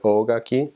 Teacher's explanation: Oh needs to be long or else it means something completely different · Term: elongated vowels